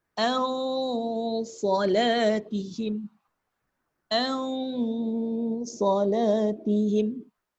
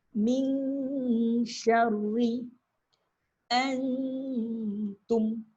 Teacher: Dia gabungkan bunyi nun dan bunyi huruf selepasnya. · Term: dengung tak sempurna